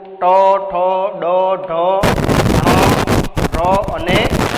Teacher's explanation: તો મૂર્ધન્ય કે જેના ઉચ્ચારણમાં જીભનો જે અગ્રભાગ છે એ ઊંધો વળીને સહેજ કઠોર તાળવાના કોઈ પણ ભાગને સ્પર્શ કરે છે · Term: મૂર્ધન્ય વર્ણો